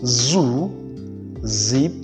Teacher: one of the fricative sounds and this is known as the voiced alveolar fricative